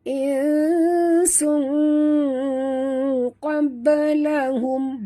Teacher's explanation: Tapi bila masuk saja hukum tajwid, bunyinya bukan sun tapi bunyinya sung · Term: ikhfa hakiki